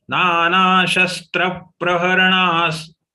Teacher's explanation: Here the visarga will have to be pronounced as sa because next letter is sa.